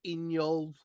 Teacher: my L is right there at the front. In my teeth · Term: broad L